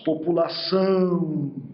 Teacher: Essa C cedilha será representada pelo som de S, e o A e o U serão nasalizados.